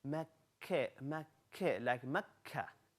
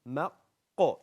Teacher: Kaf, it's slightly toward the middle, whereas qaf right at the end of your tongue.